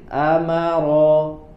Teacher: huruf ro tidak berlebihan takrirnya, tidak berlebihan di getarannya.